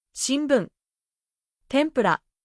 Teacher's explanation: Your lips close slightly, almost like an “m”, but very gentle.